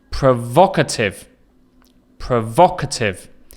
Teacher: You can hear the stress again is on the second syllable.